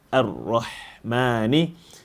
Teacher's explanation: The ha over here needs to be flattened, and you have to close the makhraj so that it becomes ha rather than Ar-Rahmani.